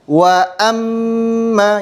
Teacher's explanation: Kemudian ketika kita berpindah dari hamzah ke huruf mim di sini ada kesalahan yang sering muncul yaitu disebut dengan tamtit yaitu memanjangkan huruf hamzah daripada yang sewajarnya ya. Jadi tidak boleh kita memanjangkan hamzah seperti ini.